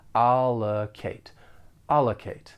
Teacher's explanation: has allocated the enclosed funds for your library project for pronunciation the verb has three syllables the stress is on the first syllable · The stress is on the first syllable, and that second syllable has that unstressed schwa sound. Allocate. Allocate.